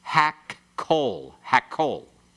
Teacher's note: When you pronounce it very swiftly, you can hardly hear the 2 kofs put in there. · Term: doubling dagesh